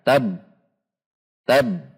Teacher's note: Ta, fathah masuk ke ba tasydid. Karena huruf ba memiliki sifat syiddah, maka dibaca seperti tertahan. Tab, tab, ada tekanan dan tertahan.